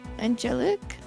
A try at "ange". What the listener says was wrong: no it's not Angelic cuz there's no IC